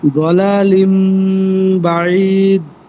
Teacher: নুন সাকিনের পর যদি বা আসে, বা দুই জবর দুই জের দুই পেশের পর বা আসে, তাহলে সেই তানবিন এবং নুন সাকিনের স্থলে মিম দ্বারা পরিবর্তন করে পড়তে হবে